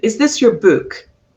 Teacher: If I was asking about the book and I followed the rules, really the only word that I will emphasize in that sentence is the word book